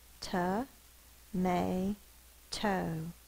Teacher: but it's unstressed so it's going to say the uh sound may is actually the stress syllable so it's going to be the long sound